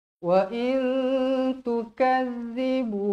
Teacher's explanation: Nun bertemu huruf ta, ikhfa hakiki. Ingat, bila ikhfa terus dua harakat dengung bacaannya, sebab tak ada huruf, tak ada baris mati ke arah atas huruf nun ni.